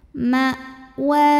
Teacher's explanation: Ma. Nah, ini hamzah suaranya tertahan ya karena punya sifat syiddah.